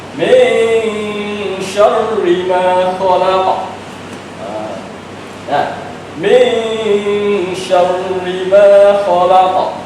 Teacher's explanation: Kita baca kita dengung iaitu tu suara ke hidung dan kita sambungkan makhraj shin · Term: ikhfa hakiki